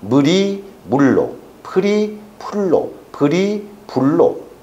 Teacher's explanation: 평순모음 의가 입술 소리의 영향을 받아 원순모음 우로 바뀌는 현상이 원순모음화죠